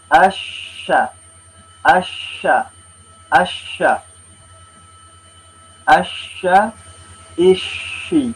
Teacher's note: sifat huruf yang berikutnya namanya adalah at-tafashi, angin menyebar di mulut. Ini hanya khusus huruf shin.